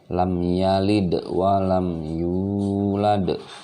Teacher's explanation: huruf qalqalah dal yang disukunkan atau dimatikan dia harus keluar pantulan suaranya